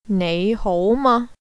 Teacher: three tones, two rising tones, followed by a high flat tone